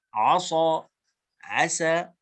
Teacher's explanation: وعسى السين وعصى الصاد أيضا مخرج واحد. فيبين أننا يعني نخلص الانفتاح ونبينه حتى لا يعني تخلط المخارج ببعضها، فلا بد أن نميز كل من الآخر بتمييز صفته، لأن السين والصاد مخرج واحد والذال والضاء مخرج واحد.